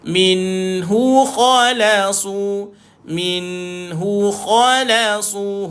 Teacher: Mim baris bawah jumpa nun sukun dibaca, jelaskan bunyi nun izhar haki.